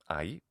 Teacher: in ancient Greek. Now, in ancient Greek, this diphthong is alpha iota, and it's pronounced ai in classical Attic. Later, by the Middle Koine period, many speakers end up pronouncing this as an open S sound.